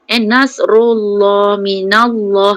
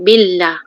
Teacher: bila di baris atas dan juga baris depan nasrullah minallah kena tebalkan. Kemudian bila di baris bawah maka nipiskan billah.